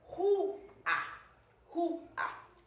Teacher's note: Então o A ele não vai funcionar como semivogal jamais. E se eu estou analisando que a minha sílaba tônica é ru, então o U aí eu estou sentindo que ele é tônico, então elas se separam sim, elas vão ficar separadas. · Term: hiato